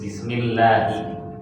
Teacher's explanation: Karena didahuli kasrah jadi tipis